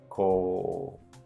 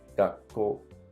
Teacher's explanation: Pay attention to the long vowels. Whenever there's an u, it makes the ko longer. Ko. So it's the same, it's 2 mora.